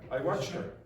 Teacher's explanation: I watched her, but I didn't say the H.